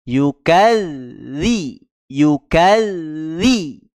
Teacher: ketika tasdid itulah makhraj huruf tersebut Contoh di sini huruf dalal kita berhenti di ujung lidah pada dua gigi seri atas